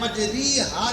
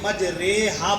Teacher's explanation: زیر کو مجہول پڑھنا، یعنی را کھڑی زیر ری نہیں، را کھڑی زیر رے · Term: امالہ